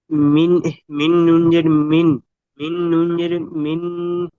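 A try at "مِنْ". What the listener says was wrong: মিন গুণা হচ্ছে কেন? গুণা করছেন কেন? মিম নুন জের মিন, তারপরে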